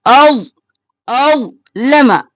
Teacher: व इज़ा अज़लम, अज़लम नहीं करना, ज़ मोटा भी और साकिन भी